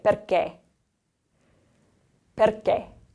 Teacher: The next one, we have the accento acuto, the closed accent. So we want to close that E sound off a little bit more